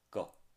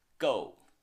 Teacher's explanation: you can just say a neutral tone, like go. Not specifically emphasize the fourth tone as go.